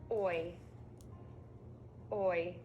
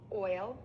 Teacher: To make this long movement vowel sound, your mouth moves from gently rounded lips to pulled back lips. The tongue moves from the front to the back. The sides of the tongue can touch the inside of the top teeth. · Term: oi sound